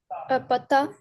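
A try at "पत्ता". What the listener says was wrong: Patta, patta. And patta, the double ta is written.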